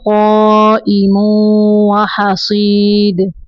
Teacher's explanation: قاف کو پر پڑھنا ہے